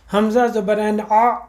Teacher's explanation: اب حمزہ حلق کا حرف ہے جو تیسرے ہمارے حلق کے حصے سے نکلتا ہے، اس کے ساتھ ہی دوسرا حلق کا حرف آ رہا ہے عین، جو ہمارے دوسرے حصے سے نکلتا ہے۔